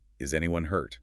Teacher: Worried, yes, no question. Rising intonation. Shows concern, urgency.